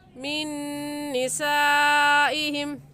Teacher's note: मिन निसाइहिम में नून साकिन के बाद हुरूफ यरमलून में से नून आ गया है तो गुन्ना करने के साथ साथ इदगाम करेंगे। और निसाइहिम में हुरूफ मद्दा के बाद हमज़ा इसी कलमे में है तो मद्दे मुत्तसिल और मद्दे वाजिब है और इस मद को 4 अलिफ के बराबर खींचेंगे, इससे कम या ज़्यादा नहीं खींचेंगे।